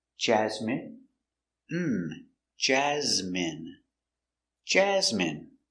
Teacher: Stress the first syllable.